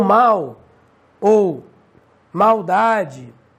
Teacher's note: o L em fim de sílaba, como é o caso de mal ou maldade, ele tem som de U. Então, alguns gramáticos consideram como semivogal. · o português brasileiro não faz diferença entre o L e o U em fim de sílaba